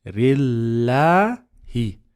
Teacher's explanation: We're gonna make the lam light in Allah's name because preceded by kasra.